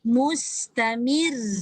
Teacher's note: Jadi bacaan dia mustamir. Nipis. Dan ra itu ditekan kuat sedikit. Mir. Sebab dia bertanda sabdu.